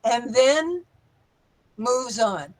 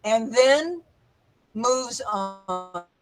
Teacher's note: remember the longest pause is after and then